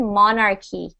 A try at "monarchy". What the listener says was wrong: Monarchy. Monarchy. So the CHY, it's not a chi sound, it's a K sound. Monarchy.